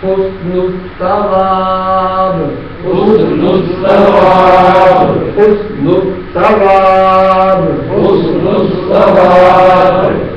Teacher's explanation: اب با کے نیچے زیر کو وقت کی شکل میں ساکن پڑھیں گے تو با ساکن ہوگی تو قلقلہ ہوگا